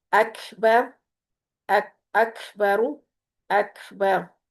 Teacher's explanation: ٹھیک ہے، اکبرو کو ہم اکبر کریں گے، اور یہاں پر بھی را ساکن جب ہوگی تب بھی یہ پر پڑی جائے گی کیونکہ اس سے پیچھے زبر ہے